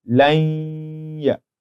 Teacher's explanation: we do not enter the noon completely into the ya because it's a letter of idgham bi ghunnah · So you see the noon is gone, but the attribute called ghunnah, assimilation, still remains. So when one listens to you, when you say lanya, they can tell without doubt that there's a noon there.